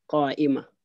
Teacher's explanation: When we pause on any noun ending in the feminine suffix tamarbuta, the ta is read as ha. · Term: al-waqfu